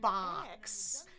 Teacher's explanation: Explode the air. Then give friction in the front.